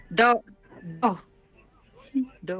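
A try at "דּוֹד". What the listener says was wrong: Let me hear the last dalid. Nice, dode. Dode.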